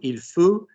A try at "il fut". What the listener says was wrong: Why are we losing vowel, people? Why are we losing vowel? We've got an U to stick to, haven't we? Go again. Don't change vowel. Don't change vowel, my love. U, go.